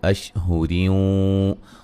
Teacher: रा को बारीक पढ़ेंगे